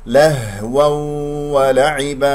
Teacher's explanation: تنوين مع الواو إدغام، ونضم الشفتين في الواو